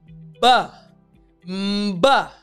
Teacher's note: my lips are together, then in, and then out, but the sound is also coming from my throat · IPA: /b/